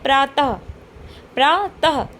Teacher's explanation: जैसे कि हम पढ़ते हैं प्रातः प्रातः जब तः कहते हैं तो हा की ध्वनि आ रही है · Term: विसर्ग